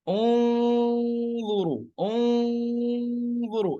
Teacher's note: Lidah saya atas harful dha, jadi saya ambil makhraj harful dha, tetapi saya keluarkan gunnah sempurna dan ada bocoran kecil dari mulut.